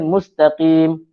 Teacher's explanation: Sin yang disukunkan, sin yang mati sebutannya adalah hamas.